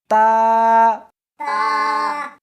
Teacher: اس حرف کو زبان کے اوپر کے تالو سے ملا کر پڑھیں گے.